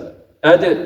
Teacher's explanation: طرف اللسان مع أصول الثنايا العليا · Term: ዳል